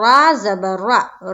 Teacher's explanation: را کو پر پڑھیں گے موٹا کر کے، یعنی کہ منہ بھر کے پڑھیں گے